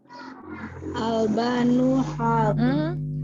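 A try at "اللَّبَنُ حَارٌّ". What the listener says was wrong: Bukan Albanu. Ini lamnya ada 2. Iya, al-labanu.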